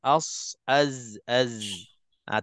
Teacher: Tiga-tiga huruf ini adalah untuk huruf safir yang dimaksud safir ni siulan atau pendesiran desiran bunyi suara laluan angin yang keluar dari mulut kita itu beserta dengan siulan ataupun desiran tadi. Jadi walaupun itu sifatnya, kita nak kena berhati-hati supaya tidak terlebih daripada kadar safirnya.